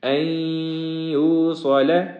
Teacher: یہاں پہ غنہ ہے اور آگے صاد کا جو حرف ہے اس کو موٹا پڑھیں گے۔